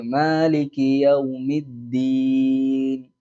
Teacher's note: അപ്പൊ യൗമിദ്ദീൻ, അദ്ദീൻ എന്നുള്ളിടത്ത് ദാലി കട്ടി കുറച്ചിട്ട് താ ആക്കി പറഞ്ഞാൽ അർത്ഥ വ്യത്യാസം വരും